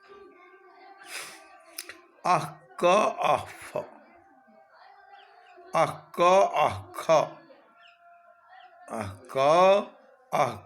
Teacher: क और ख से पूर्व जो अर्ध विसर्ग है वह जिह्वामूली कहलाता है